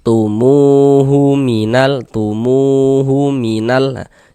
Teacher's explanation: Maka huruf tersebut dibaca panjang. Singya mu dibaca panjang. Mad thobi'i panjang dua harakat.